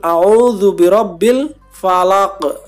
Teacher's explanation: atau waqaf maka harokatnya hilang harokatnya seperti tidak ada kemudian karyanya huruf qaf salah satu dari huruf Qalqalah maka bacanya dipantulkan